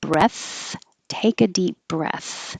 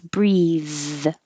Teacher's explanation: The th at the end is voiceless, so there's no vibration